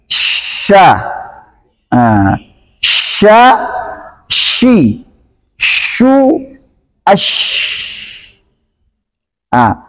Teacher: Sedangkan istilah adalah pengucapan huruf yang disertai dengan menyebarnya angin di dalam mulut. Berarti sya, sya, shi, shu, ash. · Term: tafasyi